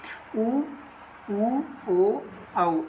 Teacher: इनको बोलेंगे तो आपका ओष्ठ जो है वो गोल हो जाता है, तो इनको जो है हम वृत्तमुखी के अंतर्गत रखते हैं, बाकी शेष को जो है आवृत्ताकार के अंतर्गत रखते हैं।